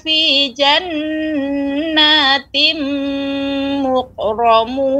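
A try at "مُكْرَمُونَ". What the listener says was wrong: Ini bukan huruf q ya Ibu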